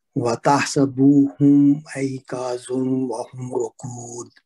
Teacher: کاف پہ الف مد ہے، اس کو 2 حرکت لمبا کریں گے۔